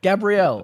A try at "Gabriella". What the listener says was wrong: Gabriella. It's too close to Gabriel.